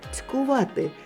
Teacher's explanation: Ци м'який, але подовження немає.